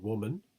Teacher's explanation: a bilabial approximant w, as in woman